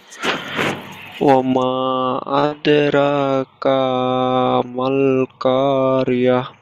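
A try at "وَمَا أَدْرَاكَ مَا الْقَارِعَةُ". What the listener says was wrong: এখানে কাপের উপরে জাবার টান হবে না, হারাকাত। কা বলে টান হবে না, আরেকবার পড়েন।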